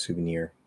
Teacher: the sue might have secondary stress but the near is definitely a primary stress